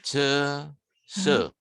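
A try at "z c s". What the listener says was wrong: Se. Jangan turun. Nah, se, ya belakangnya harus stabil ya, karena bunyinya sama.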